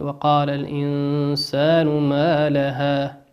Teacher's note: الإنسان نون ساكنة أتى بعدها حرف السين، والسين من حروف الإخفاء